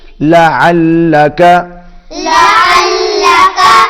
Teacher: عین حلق میں سے ادا ہوگا